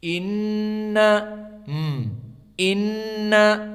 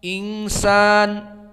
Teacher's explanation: dua permasalahan nun di sini ditasdidkan jadi gunnah dan diikhfakan menjadi gunnah, keduanya makhrajnya khaysum.